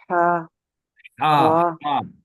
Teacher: हा को हलक से निकालना है